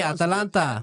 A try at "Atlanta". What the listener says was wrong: It's not at Atlanta. There's an A in between the T and the L. It's Atlanta.